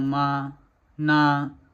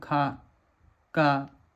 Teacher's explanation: म और ना बोलने पर साउंड गूंजता है और क और ख बोलने पे नहीं गूंजता है